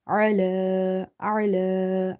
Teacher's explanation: ain from the middle of the throat with a bit squeezing sound. Ain is from the halkia letters.